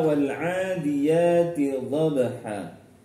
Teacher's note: A yang ada di ain dan di ya itu sama panjangnya dua harokat ya. Tidak boleh lebih. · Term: mad asli